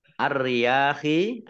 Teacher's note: Ar-riyahi, alif lamnya alif lam komariah, alif lam syamsiyah, karena tidak dibaca, langsung masuk ke huruf berikutnya, yaitu ro, ditandai dengan ro-nya ada tasdidnya, ro-nya dibaca double